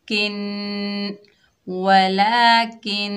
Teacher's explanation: नून मुशद्दद में एक अलिफ की मिकदार गुन्ना होगा।